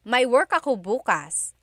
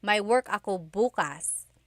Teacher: If you say bukas, emphasis is on the first syllable.